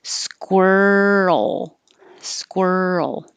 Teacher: So keep making noise as you move from the R to the L.